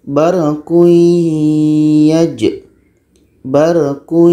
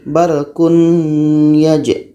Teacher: Bunyi tanwin ini masuk kepada bunyi ya secara dengung. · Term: idgham